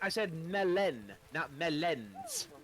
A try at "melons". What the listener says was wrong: Well, with all due respect, you just pronounced them both the exact same way, and then I don't understand what you were hitting at.